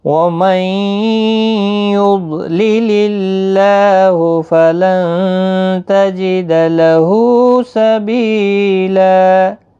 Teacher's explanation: اللہ کا لام اس زیر کی وجہ سے باریک پڑھا جائے گا